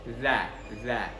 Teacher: huruf zal di sini makharijnya adalah ujung lidah bersentuhan dengan gigi seri atas. Jadi za dan agak sedikit keluar ya.